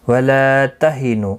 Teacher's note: لا الف مدہ ہے، نو واو مدہ ہے، دونوں کو ایک ایک الف کی مقدار کے برابر کھینچ کر پڑھیں گے